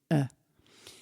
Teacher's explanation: Le schwa, c'est la voyelle neutre. J'ouvre la bouche et je laisse sortir. E. C'est un peu comparable au E muet en français.